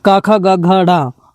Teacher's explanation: क से कंठ क ख ग घ ढ यानी कि कंठ से इनका उच्चारण होता है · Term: क वर्ग